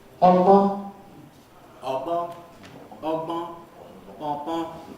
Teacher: The second vowel is nasalized. · voiced all the way through and simultaneous B and G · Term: double articulations